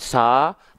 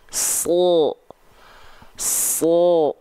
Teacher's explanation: Contohnya huruf sod. Huruf sod itu ketika dia berharokat baris atas, dia dibaca dengan vokal O terdengarnya. Bukan sa, tapi so. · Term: huruf yang tebal